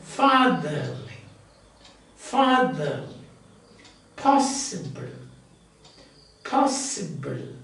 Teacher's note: So the first one is stressed, second and third unstressed.